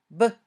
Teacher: When you say b, your vocal cords vibrate. It's a voiced sound. B. When you say both p and b, your mouth moves in the same way.